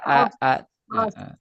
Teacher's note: A-nya jangan ke bawah tebal